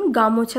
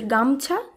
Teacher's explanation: রাড়ি উপভাষার আরেকটি বৈশিষ্ট্য হলো মধ্যস্বর লোপের প্রবণতা যেমন গামোছা থেকে গামছা